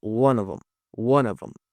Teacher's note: Aqui também ele usa um artifício bem legal que é contrair o them, onde a gente não pronuncia o TH